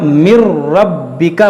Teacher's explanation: را اور لام میں بغیر غنہ کے پڑھنا ہے